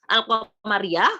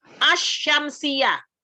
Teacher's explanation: kalau al-qamariyah lam di sukunnya kedengaran, kalau asy-syamsiyah tidak kedengaran